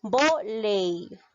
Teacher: es una palabra grave porque la mayor fuerza de voz recae la penúltima sílaba